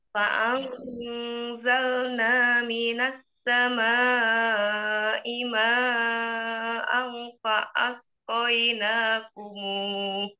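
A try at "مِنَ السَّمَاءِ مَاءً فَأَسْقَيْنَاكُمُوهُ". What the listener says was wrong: Ma'ang juga sama. Ma'ang kurang ditahan ya. Di sini juga ifa. Hanya bedanya kalau sekarang kanwin ya bertemu dengan ifa. Kalau yang sebelumnya nun sukun bertemu zai. Minas sama i ma'ang fa'asqainakumuh.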